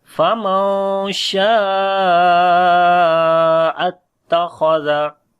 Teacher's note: Kha we read in heavy sound, zal we read in soft sound.